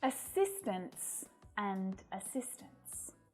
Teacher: when the s is added the t softens and most of the time you can't even hear it